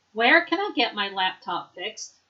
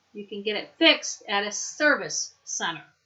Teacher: Note how the object is stressed in the question but not in the response.